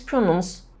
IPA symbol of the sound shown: ʃ